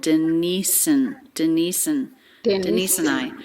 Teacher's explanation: The word and is reduced. It's just an N sound. Quick schwa N.